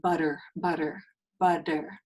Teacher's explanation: in Spanish, it's not really an R. It's a D sound. It's like a tap of your tongue, as in the sound like butter, butter, butter, da da da, tarde. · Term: single r